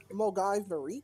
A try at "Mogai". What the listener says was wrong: Stop pronouncing the V. Mogai.